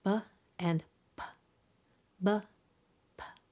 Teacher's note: The difference is whether or not there's a vibration in the vocal cords. Both b and p are produced by putting the lips together and temporarily stopping the airflow.